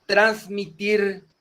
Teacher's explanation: se carga la voz en la última sílaba y no lleva acento porque no terminan en N o S. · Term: Aguda